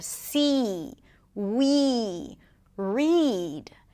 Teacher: the tense E is a little longer